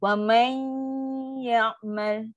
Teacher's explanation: Bunyi dengung dia tu, lama.